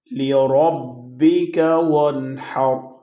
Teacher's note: نون پہ غنہ نہیں ہے، نون ساکن ہے لیکن اس کے بعد حروف حلقی میں سے حرف ہا آ گیا ہے۔